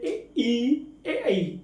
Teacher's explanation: हमको लगता है कि हमारे जीभ के आगे वाले भाग से बोले जा रहे हैं। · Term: अग्र स्वर